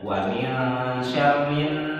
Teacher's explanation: Alif lamnya nggak dibaca. Wa min syarrin langsung ke nun ya. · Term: alif lam syamsiyah